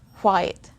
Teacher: You can literally hear the sound of the letter H at the beginning of the word.